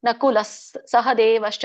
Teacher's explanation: ಮುಂದೆ ಸ ಇದೆಯಲ್ಲ ಅದಕ್ಕೆ ನಾನು ಲಸ್ ಅಂತ ಹೇಳಬೇಕು ಅಲ್ಲಿ ವಿಸರ್ಗ ಇದ್ದಾಗ ಅದು ಬಿಟ್ರೆ ಲ ಅದು ಹೇಳಿದ್ರುನು ಸರಿನೇ ನಕುಲ ಸಹದೇವಶ್ಚ ಸುಘೋಷಮಣಿ ಪುಷ್ಪಕೌ ಹೀಗೆ